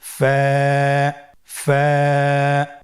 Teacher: ফা হরফটি উচ্চারণের ক্ষেত্রে বারিক হবে এবং এক আলিফ টেনে পড়তে হবে। · ফা, স্ক্রিনে দেখতে পাচ্ছেন ফায়ের মাখরাজ। ফায়ের মাখরাজ হলো নিচের ঠোঁটের প্যাড সামনের উপরের দুই দাঁতের আগার সঙ্গে লাগিয়ে উচ্চারিত হয়।